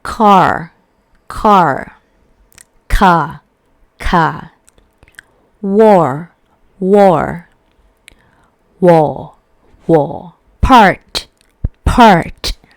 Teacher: In British English, it is a non-rhotic accent, which means British English won't pronounce the r sound when it occurs after the vowel sounds. While in American English, it is a rhotic accent, which means the r sounds that occurs after the vowel will be pronounced